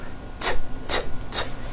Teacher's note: It's unvoiced. Your vocal cords are not vibrating.